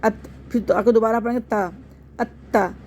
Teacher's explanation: حمزہ کو تا سے ملا کے ایک دفعہ پڑھ لیں گے